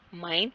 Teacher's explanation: माइन, M, M जो है माइन, M बोलते हैं जैसे लिप्स को लिप्स के साथ टच कर रहे हैं